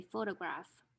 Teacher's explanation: we have two rules that are applied to this particular word flapping and also vowel reduction